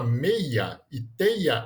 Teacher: na palavra meia e teia a gente não tem um iato por quê Porque o i nesse caso é semivogal não é vogal